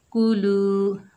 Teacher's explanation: लाम के ऊपर पेश है, आगे वाव साकिन है, लाम को वाव साकिना से मिलाएंगे, ये वाव मद्दा है, एक अलिफ की मिकदार खींचकर पढ़ेंगे